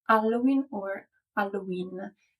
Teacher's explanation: is silent so this word is commonly pronounced alen or alen in both versions the H is silent but the stress is either on the first or on the last syllable · Italians don't usually pronounce it with the H sound at the beginning. As in Italian, the H is silent, so this word is commonly pronounced Halloween or Halloween.